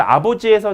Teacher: 아버지에서 지금 두 번째 나오는 비읍이 요게 양순 유성 파열음이에요